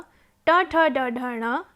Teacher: ऋटुरषाणां मूर्धा इत्यनेन सूत्रेण रि ऋकार, टु टवर्ग, ट ठ ड ढ ण, र श वर्णानाम् उच्चारणस्थानं मूर्धा